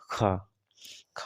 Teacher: स्पर्श व्यंजन कंठ ध्वनि आघोष और महाप्राण ध्वनि